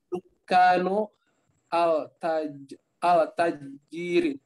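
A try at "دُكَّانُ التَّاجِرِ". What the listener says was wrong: Bukan al ya, at-tajiri. Jadi bacanya langsung di ini ya, langsung disambung. Dukanut tajiri.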